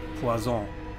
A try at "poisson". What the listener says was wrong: Poisson. Poisson. Doppel-S.